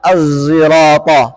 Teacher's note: huruf Shad yang dilafalkan bercampur dengan suara Zai dalam bacaan Imam Hamzah